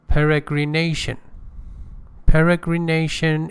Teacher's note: One secondary stress and another primary stress. The primary stress is on peregrination, on nation.